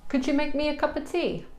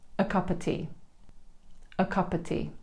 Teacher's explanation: both a and of become the Schwa sound. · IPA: /ə/